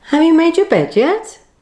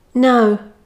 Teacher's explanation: the yes no intonation rises at the end and the answer falls